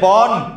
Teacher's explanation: ন এর সাথে কিন্তু আমরা অ উচ্চারণ করি না